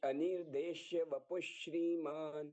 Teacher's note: अब ये दो श एक साथ में जुड़ गए ये अलग-अलग से उच्चारित नहीं होंगे